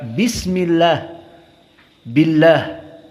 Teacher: Maka tarqiq muraqqaqah dari lafdzul jalalah. Karena kasroh. Seperti kita baca bismillah, billah.